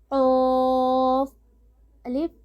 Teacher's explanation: قوف کے لیے حلق کی جڑ کو اٹھائیے. قوف کو ہم پر پڑھیں گے کیونکہ یہ حروف مستعلیہ میں سے ہے.